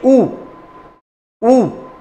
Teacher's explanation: ऊ के बोलने के लिए भी आपको किसका सहारा ले रहे हैं, आप ओष्ठ का सहारा ले रहे हैं।